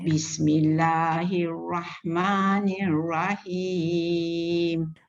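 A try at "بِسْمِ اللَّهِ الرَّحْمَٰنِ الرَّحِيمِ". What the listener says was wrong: Ra je tebal sikit. Bismillahirrahmanirrahim. Rahim.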